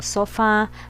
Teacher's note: a sílaba tônica se encontra na última sílaba. Então, ela é uma oxítona.